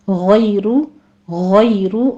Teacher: गैन को पुर पढ़ते हुए या लीन अदा करेंगे, आगे रा मुफ़ख़म पढ़ी जाएगी।